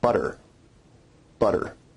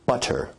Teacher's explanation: Tap sounds involve a rapid flick of the tongue to some place of articulation. In North American English, we only really have one tap, and that's at the alveolar ridge. You can hear the tap sound in the word butter.